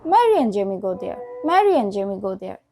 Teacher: we can cut the letter d from the word end so the word end is just pronounced like the letter n